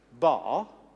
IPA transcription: ba